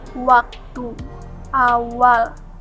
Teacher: Semivokal W merupakan semivokal bilabial yang dilafalkan dengan mendekatkan kedua bibir tanpa menghalangi udara yang dihembuskan dari paru-paru.